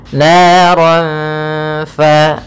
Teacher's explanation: maka kita namakan dengan bacaan ikhfa, yaitu suaranya harus disamarkan